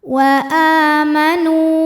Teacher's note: hukumnya adalah mad badal sebab ada Hamzah yang dipanjangkan di mana hamzahnya ini bentuk Alif yang berharakat fathah panjang maka a-nya ini panjangkan dua harakat